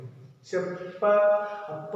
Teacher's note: इस प वाली लाइन को जब आप बोलोगे तो आपके होठ चिपक जाएंगे। प जैसे ही आपने बोलने की तैयारी की, होठ आपके चिपक गए। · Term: ओष्ठे